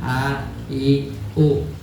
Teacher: Huruf hamzah itu keluarnya di pangkal tenggorokan